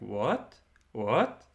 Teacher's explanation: Then there is a high rising tone that's like an upward tick over the letter. It sounds a little bit like you would be asking a question in English, something like what?